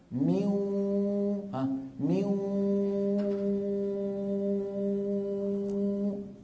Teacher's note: صوتين في آن واحد، واو من الشفتين وغنة من الخيشوم